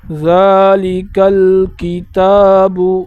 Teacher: ذالک، ذال کے اوپر کڑا ہے، کڑے کی مقدار یہ ہے کہ ایک الف کی مقدار اسے کھینچنا ہے۔ کاف کو لام کے ساتھ ملا کر پڑھنا ہے، جیسے ذالک الکتاب، تا پر بھی کڑا آیا ہے تو اس کو ایک الف کی مقدار کھینچ کر پڑھنا ہے۔